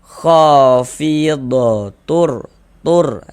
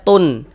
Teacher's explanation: cara membacanya dengan cara memasukkan, kemudian tidak disertai dengan gunnah. · Bunyi tanwinnya dimasukkan ke huruf ro. Kita baca khafidatur, tur. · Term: idgham bila gunnah